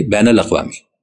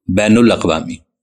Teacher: بین کے نون پر زبر ہے، مگر اردو کے اکثر لوگ بین کے نون پر پیش پڑھتے ہیں۔ بنیادی طور پر یہ عربی لفظ ہے، بین کے نون پر زبر ہے اور یہ نون ایسا ہے کہ عربی میں کسی بھی صورت میں تبدیل نہیں ہو سکتا۔